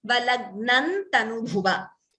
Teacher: So instead of Anuswara, we get Na. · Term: Anunasika Akshara